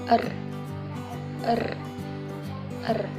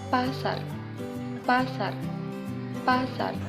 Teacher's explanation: Konsonan apico-alveolar getar er. terjadi bila artikulator aktif yang menyebabkan proses menggetar itu ialah ujung lidah dan artikulator pasif gusi.